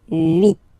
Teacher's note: this H letter here, okay, doesn't exist phonetically, so we don't really pronounce it, okay? So if you listen carefully, you will only listen or hear these vowels at the beginning of the word.